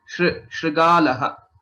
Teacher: There's no stress on shri because it is a gunitaksharam.